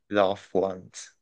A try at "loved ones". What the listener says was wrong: There we go.